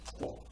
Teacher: you were probably taught that a QU is pronounced like a K followed by a W, but that's not true. It's actually one sound.